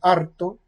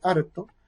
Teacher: Y por ejemplo, uno puede decir eh, harto o harto, es decir, con vibrante múltiple, harto, o con vibrante simple, harto